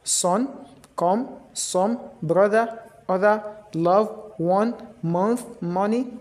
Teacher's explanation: All these words they give all the O letter O in these words they give wedge instead of O sound